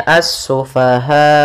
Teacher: dimatikan hamzahnya dengan sifat jahar dan syiddahnya hamzah, yaitu tertahannya nafas dan tertahannya suara